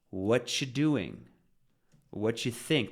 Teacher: Instead of what do you think, we have dropped the do, and now we have T followed by a U. And this creates ch.